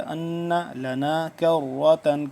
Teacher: ان پہ ہم کریں گے غنہ، نون مشدد ہے